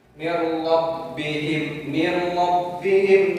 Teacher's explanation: Nun mati menghadapi huruf ra, terjadilah idgham bila gunnah yang tanpa dengung